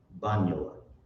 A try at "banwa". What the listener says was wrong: It's just banwa. banwa. no, there's no yeah there. It's just banwa.